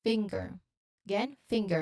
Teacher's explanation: So assimilation, we understand that one sound that as one sound becoming more like a neighboring sound. So the NG sound naturally blends into the G sound that follows it, creating a very tight finger.